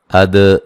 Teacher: اد دال پہ قلقلہ کریں گے